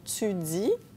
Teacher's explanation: L'affrication du T et du D devant I et U, comme dans tu dis, qui est typiquement québécoise.